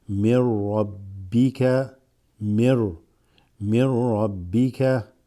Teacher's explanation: The ra has a shadda, so the noon is a noon sakina, noon with a sukun. It assimilates with this ra, so the noon drops and it's almost like you read it right into the ra.